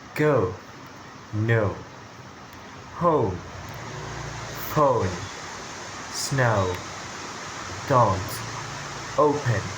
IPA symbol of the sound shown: əʊ